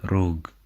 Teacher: the double R represents a trill in Albanian